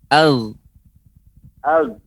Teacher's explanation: Iya, dia seperti tertahan. Ag, karena dia tenggorokan bagian atas.